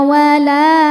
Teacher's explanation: La mad tabi'i muqaddar karena ada baris fathah tegak di atas huruf lam. Dibacanya panjang 2 harokat.